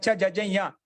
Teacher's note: ఇయా, ఇయా అన్నప్పుడు చచ్చ జజ్జ ఇయా. చవర్గం నుండి పంచమాక్షరం ఇయా, అక్కడ ముక్కు స్పందిస్తుంది, నోరు కూడా స్పందిస్తుంది. అలాగే ఈ పంచమాక్ష అన్ని కూడా పలికేటప్పుడు ముక్కు సహాయం చేత నోటి సహాయం చేత పలుకుతాం. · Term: అనునాసిక వర్ణాలు